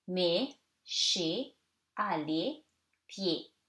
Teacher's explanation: so you read it like the closed, more closed sound E